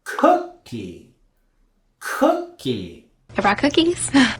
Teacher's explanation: with the word cookie, we're also going to raise our intonation on that first syllable